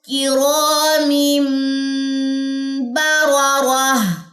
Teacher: تنوین کے بعد ہمارے پاس با ہے تو یہاں پہ اقلاب کا رول اپلائی ہوگا. ہم یہاں پہ ایک تو غنہ کریں گے اور چھوٹی میم جو یہاں پہ ہے یہ اقلاب جو ہمارے پاس رول ہے اس کی نشاندہی کر رہی ہے.